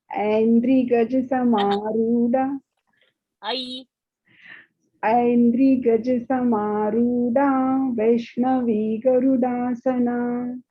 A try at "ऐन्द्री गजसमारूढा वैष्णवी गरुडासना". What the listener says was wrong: Samarudha, dha, mahaprana, Aindri's dri also should be dirgha. You are saying Samaruda. Samarudha. Samarudha. And quickly change that I pronunciation. Still, it is a Hindi. It is not Sanskrit yet.